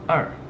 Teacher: We don't have an initial, but we have this final 二, and then we have this falling tone